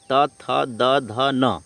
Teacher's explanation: इन वर्णों का उच्चारण स्थान जो है वह क्या है वह है दंत